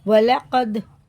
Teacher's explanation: اس کو غنہ اخفا کچھ نہیں کر کے پڑھیں گے، اس کو اظہار شفی کہتے ہیں، ٹھیک ہے، اظہار شفی۔ وَلَقَدْ، دال میں قلقلہ، قاف میں بھی قلقلہ ہے